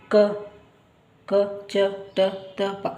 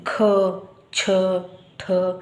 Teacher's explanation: ಇಲ್ಲಿ ಹೆಚ್ಚಿನ ಉಸಿರು ಹಾಕಿ ನಾವು ಹೇಳ್ತೇವೆ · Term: ಮಹಾಪ್ರಾಣಕ್ಷರಗಳು